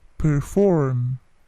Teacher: P-nya plosif tetapi tidak terlalu besar plosifnya, bukan perform, tapi perform.